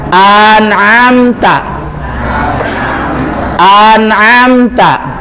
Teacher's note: Alif ya, alif di mulut, di luar. Ain di tenggorok ya.